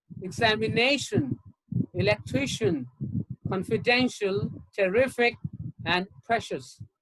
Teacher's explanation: i a l i c and i i o u s you have the stress on the second syllable from the end